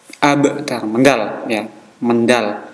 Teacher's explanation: Baknya sukun maka harus dibaca qalqalah, mendal.